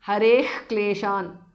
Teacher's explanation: visarga changes to jihwa mulya. Kleshan, hareh kleshan because of sandhi.